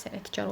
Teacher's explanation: Kar və keş şəkilçili sözlərdə tələffüz zamanı k g əvəzlənməsi baş vermir.